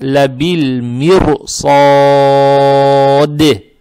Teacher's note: а даль надо подчеркивать, так как появляется сукун и будет кал-кал. То есть, ла-биль-мир-со-де. · Теперь буква СО, она с фатхой, опять фатха приобретает оттенок О, и опять, если мы решили остановиться, фатху мы имеем право тянуть до 4 раз, мад-арид будет, а даль надо подчеркивать, так как появляется сукун и будет кал-кал.